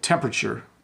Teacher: I hardly say the R when I say temperature.